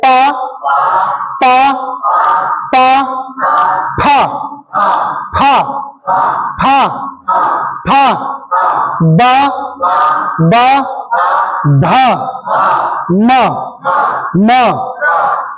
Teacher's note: दोनों ओष्ठों को मिला करके मिलता है ये, दोनों होठों को मिला करके